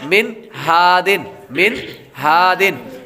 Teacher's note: نون ساکن کے بعد ہا حروف حلقی میں سے آ رہا ہے تو غنہ نہیں کریں گے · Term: اظہار